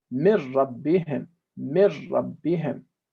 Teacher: The residual sound of the nun has disappeared, so there's no ghunna. That's why we call it idgham bila ghunna. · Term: complete merging